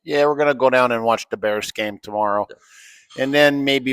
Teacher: invece di th a volte lo rendi semplicemente una D. Invece di "the Bears", dirai "De Bears". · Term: accento di Chicago